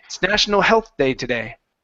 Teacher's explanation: If it's national health day today, I wouldn't say national health day. I would minimize that th and pronounce sort of like half the sound and then move into the d.